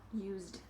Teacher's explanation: we pronounce that letter as a z sound so z is voiced and in the past it is continuing to be voiced used